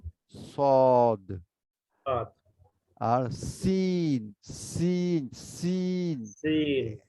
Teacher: সামনে নিচে দুই দাঁতের গোড়ায় লাগিয়ে বলবো